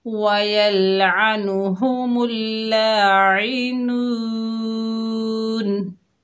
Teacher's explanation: वक्फ की हालत में नून का ज़बर ख़त्म हो गया, नून साकिन हो गई, नून को हमने आर्जी सुकून दिया। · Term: मद्दे आर्जी सुकून